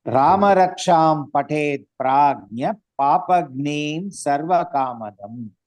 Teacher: Now when we say entire line, Prajnaha will become Prajna.